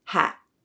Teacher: we may use a glottal T when T comes at the end of a word